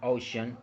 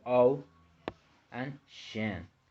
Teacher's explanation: Okay, so then we have the word ocean, which is also a 2-syllable word, which are the O and shen, and the stress is located in the vowel O